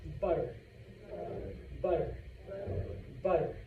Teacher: The double T in butter, tip of your tongue, touches the top of your mouth, and then sits back down.